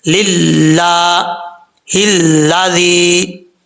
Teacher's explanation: لام کے اوپر کھڑا زبر ہے، ایک الف کی مقدار لمبا کیا جائے گا اور ایک الف جو ہوتا ہے وہ 2 حرکات کے برابر ہوتا ہے، یہ یاد رکھیے گا.